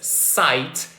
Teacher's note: we're going to feel that the air is kind of like escaping kind of like slithering out of our mouths. And that's why we're going to call this sound a sibilent sound. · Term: sibilant sound